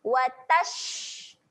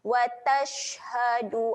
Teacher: Huruf shin ketika mati sifatnya adalah keluar angin. Okey, jadi kita keluarkan angin ketika shin mati tu.